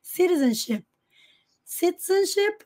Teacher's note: aqui o t tá entre sons de vogais Então ele pode ser pronunciado com som de R principalmente no inglês americano